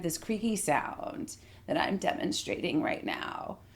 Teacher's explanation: Vocal fry is what occurs when there isn't enough air pressure underneath your vocal folds for you to create a clear sound. And so instead, you get kind of this creaky sound that I'm demonstrating right now.